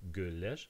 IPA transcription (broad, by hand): gyller